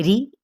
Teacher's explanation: یہاں پہ باریک را ادا کی جائے گی کیونکہ را کے نیچے زیر ہے، ری کر کے، ٹھیک ہے، ری نہیں پڑھنا.